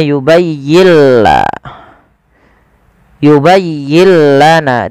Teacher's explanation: Idghamnya adalah nun sukunnya diidghamkan ke huruf lam. Maka yubayyilla. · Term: idgham bila gunnah